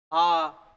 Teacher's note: यहां ध्यान रखना, तो आ होता है ना, आ अपने बोलेंगे ना आ देखो आ, अपने बोलेंगे ई ए आ ए आ, ऐसे जबड़ा जो है खुलता जाएगा। ये विवर्त स्वर होता है आ।